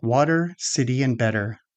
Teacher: a flap T is a quick tongue tap between vowels. Second, it often sounds similar to a soft d.